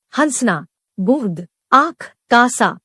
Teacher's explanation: इसके उच्चारण में हवा नाक और मुंह दोनों से निकलती है। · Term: अनुनासिक